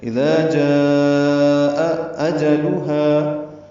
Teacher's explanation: نفسن اذا ذال نرمی سے ادا ہوگا اور الف مدہ ہے، جاء میں مد متصل ہے، الف مدہ کے بعد حمزہ ایک ہی کلمے میں آنے کی وجہ سے یہاں پہ دو حمزے ہو گئے ہیں، ایک جاء کا اور ایک اجلھا، تو واضح طور پر پڑھیں اذا جاء اجلھا۔ حمزہ اقصی حلق سے ادا ہوتے ہیں اور ان میں بالجہر ہی ادا ہوتے ہیں